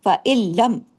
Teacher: رہا ہے، اس میں کوئی غنہ نہیں ہوگا، فَإِلَّمْ، سیدھا سیدھا اس کو کہتے ہیں ادغام تام بلا غنہ، کوئی غنہ نہیں ہے لیکن ادغام ہو رہا ہے ، مکس ہو رہا ہے اس کے اندر جا کے، فَإِلَّمْ،